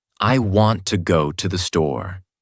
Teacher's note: Take a simple sentence like, "I want to go to the store." A learner might say, "I want to go to the store." Stressing every single word and making the sentence feel overly rigid. But a native speaker would say, "I want to go to the store." With the stress naturally falling on go and store, while I wanna and to the become softer, faster, and more relaxed.